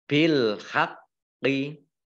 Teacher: Nah, bil haqqi ini ada alif lam qamariyah ditandai dengan lamnya dibaca sukun. Qafnya dibaca double, ada tasdidnya tapi tidak dimantulkan ya.